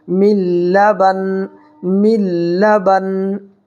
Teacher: جب یہاں پر ہم وقف کریں گے تو یہ 2 زیر جو ہے حذف ہو جائے گا اور نون کے اوپر ساکن آ جائے گا